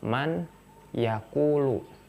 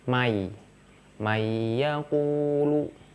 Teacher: Nunnya dimasukkan ke iya. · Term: idgham